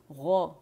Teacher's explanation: موٹائی proper ہونی چاہیے کیونکہ اس میں استعالہ ہے، ٹھیک ہے، زبان کی جڑ اوپر جا کے نرم تالو سے لگتی ہے